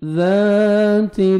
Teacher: والسماء ذات الف مدہ 1 سیکنڈ، ذال کو کھینچنا ہے اور ذال کو نرمی سے ادا کریں گے۔ سامنے والا یہ 2 دانت ہیں اوپر والے، وہ نیچے زبان کو ٹچ کریں گے، ٹنگ کو، تو نرمی سے ذال ادا ہوئے گا۔